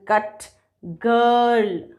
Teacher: टंग का central part hard palate और soft palate के बीच के पोर्शन की तरफ मूव करेगा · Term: सेंट्रल वॉवल्स